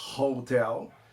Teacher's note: Existe H em inglês, que não é mudo, como na palavra hotel, que tem som de meio R